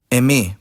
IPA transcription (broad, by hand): ɛˈme